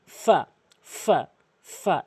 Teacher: নিচের ঠোটের পেট নিচের ঠোটের পেট ফাফা এভাবে উচ্চারণ করবেন।